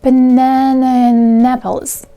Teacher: words within a speech unit are usually set without a break the sound at the end of the word is linked to the sound at the beginning of the next word without any break